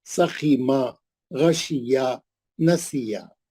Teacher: खींचना नहीं कहीं भी, ना जबर को खींचना ना जेर को खींचना. एक हरकत से ज्यादा लंबा नहीं करना.